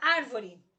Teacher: A sílaba tônica da palavra árvore é ar. Veja, contando de fora para dentro, re é a última, vo é a penúltima, ar é a antepenúltima, acentuada graficamente, palavra proparoxítona.